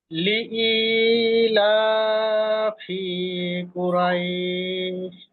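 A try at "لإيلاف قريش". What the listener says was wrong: মনে হয় একটু টান হয়ে গেছে, আর একটু কম হবে, টান হবে না।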